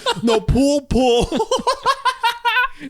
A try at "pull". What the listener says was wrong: You have no difference when you say it.